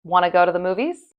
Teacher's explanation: We don't even say the do you part. We just drop that completely.